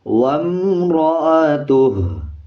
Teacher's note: اگر آپ اس پہ وقف کر لیں گے، یہ چھوٹا تو آپ کو نظر آ رہا ہوگا، پھر ہا کو لمبا نہیں کیا جائے گا بلکہ ہا کی آواز کو آدھا پڑھا جائے گا